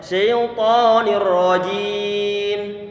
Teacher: sifat huruf ra itu dia punya sifat takrir ataupun getaran di ujung lidah.